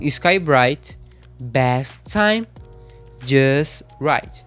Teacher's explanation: a gente some com esses sons de T e D quando tá no final da palavra e a próxima palavra que vem é com a consoante